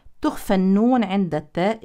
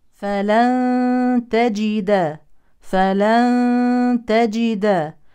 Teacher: تخفى النون عند التاء اخفاء حقيقي